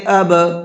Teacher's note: با کے اندر قلقلہ کریں گے، اب اس طرح سے، اور دونوں را کو پر کر کے پڑھیں گے، ابرار۔